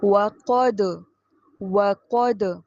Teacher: قوف موٹا پڑھیں اور دال پر میکسیمم قلقلہ یعنی دال کی آواز کو ہلائیے